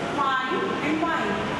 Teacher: lower lip is touching the upper front teeth